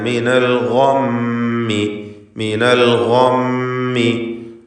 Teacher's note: ഗൈനിന് പൂർണ്ണമായ തഫ്ഖീം കൊടുക്കുക. ഇസ്തിഅലാന്റെ ഹർഫാണ്.